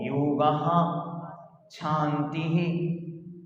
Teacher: अलग से हा का उच्चारण पीछे से आए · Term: विसर्ग